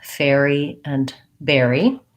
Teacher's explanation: for that air diphthong i like to write it this way it's the a gliding into the er